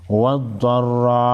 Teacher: ضاد حروف مستعلیہ میں سے ہے، ضاد کو موٹا پڑھیں گے. را پر زبر ہے، را کو بھی موٹا پڑھیں گے.